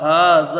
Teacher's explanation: ہا کے اوپر کھڑا زبر ہے، ایک الف کے برابر اس کو کھینچ کے پڑھا جائے گا